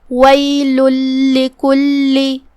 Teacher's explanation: ہمیں 2 حرف کے برابر لام کو ادا کرنا ہے، کیونکہ تشدید کی اصلیت 2 حرف ہوتی ہے. جیسا کہ یہاں حرف اللام ہے تو یہ 2 لام ہیں، لام ساکن اور لام متحرک زیر سے.